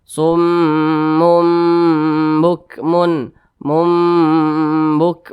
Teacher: bacanya juga didengungkan kira-kira dua dua ketukan atau dua harakat · Nah, di depan tanda tanwinnya ini ada huruf ba, atau misalkan saudara menemukan nun mati atau nun sukun, di depannya itu ada huruf ba, maka itu juga sama, hukum bacaannya adalah iqlab. Bacanya juga didengungkan. Kira-kira dua ketukan atau dua harokat.